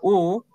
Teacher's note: Alafu irabu U ni irabu viringwa ambayo ni ya nyuma juu.